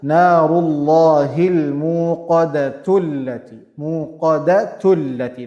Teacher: I didn't say the hamzatul wasl, I didn't pronounce it.